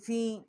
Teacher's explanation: اس کے اوپر چھوٹی مد ہے، 3 الف جتنا اس کی آواز جو ہے وہ بلند کی ہے